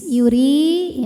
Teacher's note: huruf ra diharokati kasrah, ini dibaca secara tarqiq, maka dibacanya tipis